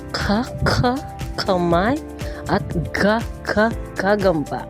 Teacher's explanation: At para naman panglalamunan, meron tayong ka at ga.